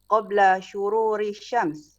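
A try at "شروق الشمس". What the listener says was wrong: Syuruqis syams, bukan syururi, syuruqis syams. syuruqi.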